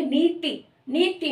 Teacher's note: नीति न में बड़ी ई की साउंड आ रही है लेकिन त में छोटी ई की साउंड आ रही है